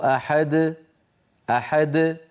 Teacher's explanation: الدال خرجت ما بعدها شيء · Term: القلقلة